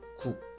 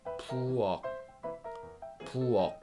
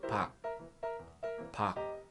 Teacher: we just stop the sound at the articulation place where back of your tongue meets your palate. It sounds like It is not ug or uk. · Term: proper consonant